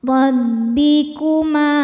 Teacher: Huruf ra dibaca secara tafkhim, karena ra berharakat fathah. Cara bacanya ditebalkan. Rabbikuma Ma hukumnya mad thabi'i dzahiri, karena ada alif didahului harakat fathah.